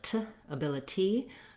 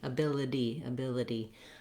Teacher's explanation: noticed that rather than a released t sound like t ability i tend to say that more with a flap t it sounds more like a d